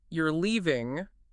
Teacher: if I say you're leaving with a falling pitch, it's just a definite statement of fact · if I say you're leaving with a rising pitch, it's a question of disbelief. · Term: rising intonation